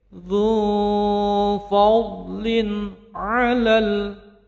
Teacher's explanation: Dzu fadlin, mad tabi'i 2 harokat, tanwinnya bertemu dengan ain menjadi izhar halqi, bacaannya jelas dan pendek. Dzu fadlin 'alal, alif lam qamariyah, 'alal 'alamin.